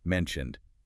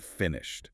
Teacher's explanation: the ed on mentioned sounds like a D, but on finished, it sounds like a T